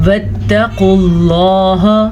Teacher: क़ाफ को पुर पढ़ेंगे, लफ्ज़ अल्लाह को पुर पढ़ेंगे क्योंकि लफ्ज़ अल्लाह से पीछे वाले हर्फ के ऊपर पेश है इसलिए।